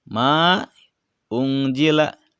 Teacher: dibacanya ini 2 harokat, mad jaiz munfasil. Bisa juga 3 harokat ya, karena kan jaiz itu boleh.